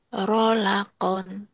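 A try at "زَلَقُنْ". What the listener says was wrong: Rolakon kan ada titiknya, titik-titiknya nih. Zai rapuh ya. Zalkon. Zalkon. Za. Jangan zai. Zai itu kalau belum berbaris ya. wau kan belum baris wau.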